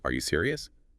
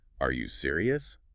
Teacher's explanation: It barely sounds like a question. But add that little upward flick at the end